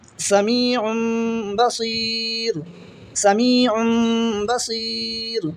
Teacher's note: इक़लाब होगा, गुन्ना के साथ पढ़ेंगे और नून की आवाज़ को मीम से बदल देंगे